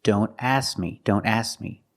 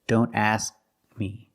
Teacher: when you say don't ask me don't drop the K completely we need to make the position of the K but we don't release the sound